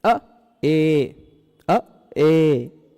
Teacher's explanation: जितना समय हम अ बोलने में लगा सकते हैं उतने कम समय में हम ए नहीं बोल सकते। इसका दो गुना समय लगेगा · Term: दीर्घ